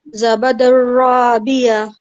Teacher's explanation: تنوین کے بعد حروف را آ رہا ہے ادغام میں سے، حروف یرملون میں سے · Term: ادغام بلا غنہ